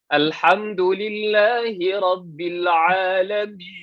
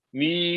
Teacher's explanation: Jangan masuk hidung. Sebab yang masuk hidung cuma mi sahaja. Mi, yang ya-nya itu jangan masuk hidung. Yang min, nun, itu memang masuk hidung.